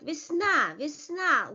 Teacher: Лето, without the stress, in unstressed position. Весна, A is stressed, but Ye is not stressed.